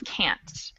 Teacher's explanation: we never put the schwa sound in can't. Can't is always can't.